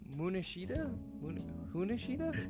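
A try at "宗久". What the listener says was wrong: You love putting the letter D in words that don't have a D. Munihisa. You didn't even get it right. Munihisa. There's no N or okay, I could be like a long E, sure, but there's no N. Munihisa, EY.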